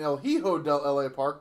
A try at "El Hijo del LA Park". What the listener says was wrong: Eho. Eho. The H is silent and the J makes an H sound. Eho. Eho. Eho. Eho. Eho.